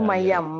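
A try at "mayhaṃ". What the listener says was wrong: Not mayang, may hang. Mayhang.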